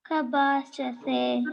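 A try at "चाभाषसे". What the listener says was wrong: That is not ca ka, that is ca ch. Okay, so say chabhashase.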